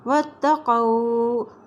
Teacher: واو کی زبر کو تا کے ساتھ ملاتے ہوئے پڑھیں گے کیونکہ تا کے پر شد ہے